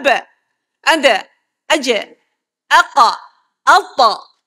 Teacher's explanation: huruf-huruf yang berdetak. Bila dimatikan dia berdetak. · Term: huruf qalqalah